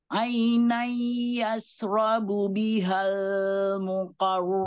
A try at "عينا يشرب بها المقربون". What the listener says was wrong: بها جangan ditahan، بها المقرب، langsung بها المقربون، alirkan ya ulangi.